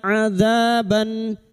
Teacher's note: dza fathah bertemu alif 2 harokat mad tabi'i